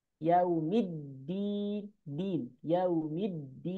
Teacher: Midnya jangan masuk hidung ya